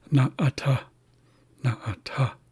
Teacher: So what I know about that is that it signifies basically like a pause, where you essentially hold your breath for like a very, very brief moment. So it's na, and then you kind of close your vocal cords, and then you pronounce the rest of it. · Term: glottal stop